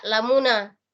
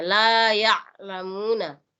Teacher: kalau ain di situ itu lebih ditekan sedikit penyebutannya. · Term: ain sukun